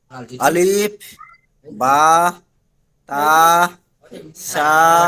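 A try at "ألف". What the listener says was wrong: ভাই আলিফ, আলিফ টান হবে না, আলিফ টান হবে না, আলিফ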